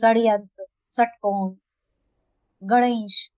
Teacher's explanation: मूर्धन्य श है, तो वो मूर्धा से भी उसकी आवाज आती है